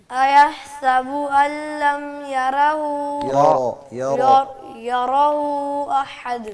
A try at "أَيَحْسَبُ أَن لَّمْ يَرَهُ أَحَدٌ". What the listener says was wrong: مد پوری کریں.